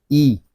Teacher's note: اس کو حمزہ زیر اے نہیں پڑھیں گے، ہم اس کو عربی لب و لہجے میں پڑھیں گے ای